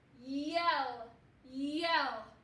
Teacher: just saying the y sound as a consonant really short and fast